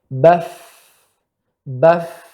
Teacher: Baf, ada angin, ya, maka itu huruf hamsun. Ya, kaidahnya pertama samar suaranya, kedua tidak bergetar, ketiga banyaknya udara keluar